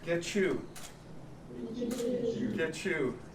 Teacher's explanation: t plus y is going to be cha